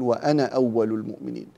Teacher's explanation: هنا الألف التي في أنا عند حفص وعند غيره من القراء تسقط هذه الألف في حالة الوصل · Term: الألفات السبعة